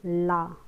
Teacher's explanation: जैसे बोलो ला, तो जो ला बोलेंगे तो जीभ ऊपर खड़ी हो जाएगी और जो हवा है यानी कि वायु है वो जीभ के दोनों सिरों से बाहर आएगी, राइट साइड से और लेफ्ट साइड से, इसको बोला जाएगा पार्श्विक व्यंजन।